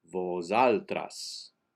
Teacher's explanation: the first s is pronounced like a z